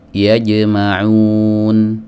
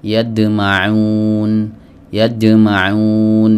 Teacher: Ya, adapun yang salah yadma'un, mirip seperti huruf dal, tercampur antara jim dengan dal